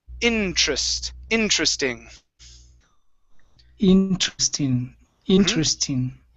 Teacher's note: this word here is pronounced interesting so the stress is at the very beginning